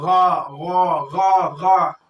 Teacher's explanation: آخری حلق سے غین اور خا ادا ہوتا ہے. تو جب آپ اس کو نکالیں تو غا غا غا غا, دیکھو رگڑ پیدا ہو رہا ہے جو حلق جو ہے نا شروعات.